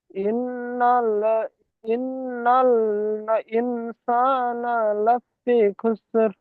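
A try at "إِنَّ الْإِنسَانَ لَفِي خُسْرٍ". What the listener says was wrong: ইন্নালটা দুবার হয়ে যাচ্ছে কেন? একবার বলেন। ইন্নাল ইনসানা লাফি খুসর।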